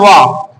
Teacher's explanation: वाह का उच्चारण स्थान होता है आपका दंतोष्ठ